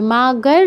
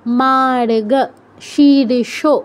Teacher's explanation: মার্গ, রেফটা খেয়াল করতে হবে, মাগর নয়। রেফটা যেখানে আছে তার আগে রটা উচ্চারণ হবে।